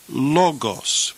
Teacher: the accent occurs over the first syllable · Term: acute accent